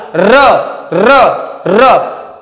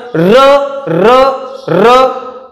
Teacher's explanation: पाठीमागून जीभ येते आणि व्हायब्रेट होते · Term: कंपित वर्ण